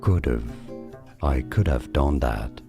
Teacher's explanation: So if you want to contract this, you can say could have, okay, so could, as you know, you ignore the L, and then of, just put a schwa sound before a V, of. Could have, I could have done that.